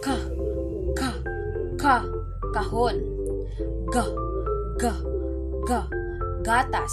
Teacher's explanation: Ang ibabaw ng dulong dila ay dumidikit sa velum o malambot na bahagi ng alangala. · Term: Pangalangala